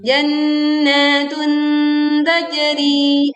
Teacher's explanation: Tajri, pantulkan jim sukun dengan suara yang miring. · Janna tasydid ya, tekan disertai dengung yang sempurna, lalu panjangkan dua harokat.